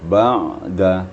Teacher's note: Kalau ain sukun itu sifatnya bain-bain, arti tidak rakhawah, ni tidak pula syiddah, tidak bertalian dan tidak pula terputus suara kita. Jadi sedang saja